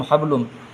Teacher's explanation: یہاں تنوین کا میم ہے تو یہاں پہ گنہ ہوگا، اس گنہ کا نام ہے ادغام کیونکہ حروف یرملون میں سے میم آیا ہے۔ اس کا قاعدہ